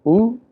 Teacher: Similarly, if you want to refer to the sound vowel oo, we refer to it as rounded close back vowel